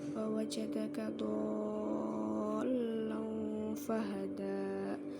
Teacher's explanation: Jadi membacanya bukan panjang 2 harokat tetapi 6 harokat. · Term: mad lazim kilmi musaqqal